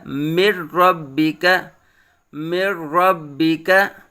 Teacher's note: نون اور را کو ملا بھی دیا ہے اور بغیر غنہ کے پڑھا ہے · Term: ادغام یرملون بغیر غنہ